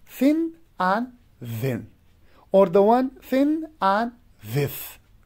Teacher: you produce this sound sometimes they're also called interdental sound so they become interdental when you take out the tip of tongue between upper and lower teeth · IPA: θ ð